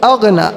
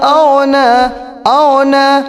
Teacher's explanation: اغنا کو کچھ لوگ پڑھتے ہیں اغنا، اغنا یعنی کہ وہ گاف پڑھتے ہیں اردو والا. یہاں پر وہ گاف نہیں آئے گا بلکہ یہاں عربی والا غین آئے گا